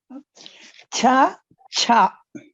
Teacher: Chavarga Karkasha Alpa Pranaha